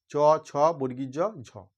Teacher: স্পর্শধ্বনি স্পর্শ ধ্বনি উচ্চারণ করার সময় উষ্ম ধ্বনির প্রভাবে উচ্চারিত হয় এই চারটে ধ্বনি স্পর্শ ধ্বনি এবং উষ্ম ধ্বনির সংমিশ্রণে উচ্চারিত হয় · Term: ঘৃষ্ট ধ্বনি